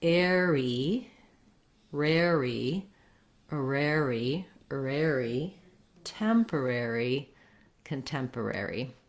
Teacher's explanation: my ary just like in sanctuary is an air diphthong